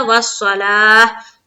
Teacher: ता को हा बना देंगे, हा के ऊपर लाएंगे सुकून यानी कि जद।